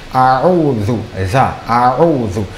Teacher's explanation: Concernant votre lecture, il faut faire attention d'abord à l'isti'ala, a'udhu. La lettre zal doit être prononcée avec la langue légèrement ressortie.